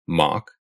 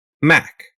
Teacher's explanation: when you say mock your tongue is low and far back in your mouth when you say Mak your tongue moves forward